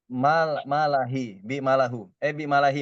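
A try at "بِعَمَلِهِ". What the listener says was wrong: ada ainnya. Ketinggalan ain. Bi amalihi.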